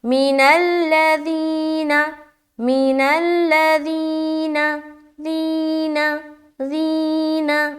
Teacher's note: ذی میں پریشر ڈال کے کھینچ رہے نا کیونکہ یا مدہ ہو رہا ہے